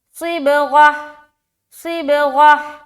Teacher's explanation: غین موٹا بھی اور صاد بھی موٹا، صاد موٹا ہوتے ہوئے با میں قلقلہ کریں گے ملاتے ہوئے، اور غین کو بھی موٹا اور ہا میں ملائیں گے تو غہ، غہ، ہا پراپر۔